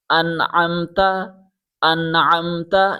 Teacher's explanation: دوبارہ سنیں، جب نون ساکن یا تنوین کے بعد حروف حلقی جو ابھی 6 حروف میں نے بتائے، حروف حلقی میں سے کوئی حرف آئے تو نون کی آواز کو بغیر غننے کے صاف اور واضح پڑھا جاتا ہے